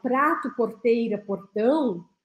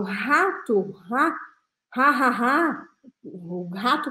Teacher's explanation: letra R Por exemplo quando quando eu falo prato Porteira portão eu tô sentindo a minha língua vibrar no céu da boca